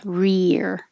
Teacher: Your tongue has to stay very high for the E, rear.